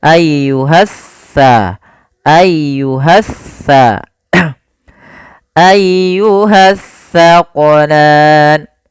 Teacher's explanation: Alif lam yang dia tertulis tapi tidak dibaca lamnya sehingga langsung diidgamkan ke huruf setelahnya. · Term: alif lam syamsiyah